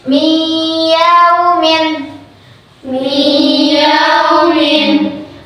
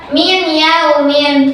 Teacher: Ya, itu kan termasuk huruf dari idgham bikunah. Maka cara bacanya harus dimasukkan ke huruf ya dan ditahan selama dua ketukan. Contoh mi yaumin mi yaumin harus dimasukkan. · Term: idgham bighunah